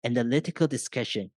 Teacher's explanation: I'm listing three items here and the last one is in a falling tone while the the previous two items are in the rising tone